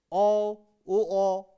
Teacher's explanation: ऐसे स्वर जिनका उच्चारण करते समय जो है वो होंठों की आकृति जो है वो कैसी बनती है, गोल, वृत्ताकार।